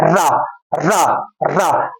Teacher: हमारी जीवा अर्थात जीभ जो है पीछे की ओर मुड़ जा रही है इसीलिए हम रा को लुंठित व्यंजन कहते हैं क्या कहते हैं